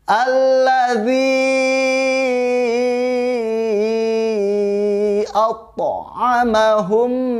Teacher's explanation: Alladzi atta, ada qalqalah, ada huruf yang dipantulkan, yaitu huruf to. Huruf to termasuk huruf yang dipantulkan.